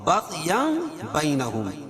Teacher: ہم البینات کھڑا زبر قائم مقام الف مدہ کے، اور بغیا بینہم، اور یہاں اقلاب ہوگا کیونکہ تنوین کے بعد با ہے تو تنوین کو میم سے بدل کر غنہ اور اخفا کے ساتھ پڑھیں گے، اس کو اقلاب کہتے ہیں.